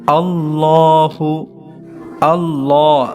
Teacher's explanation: লামের মধ্যে এক আলিফ টান হবে